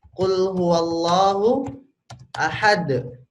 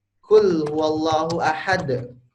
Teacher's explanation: Huruf qaf ini terletak di lidah paling ujung bagian belakang.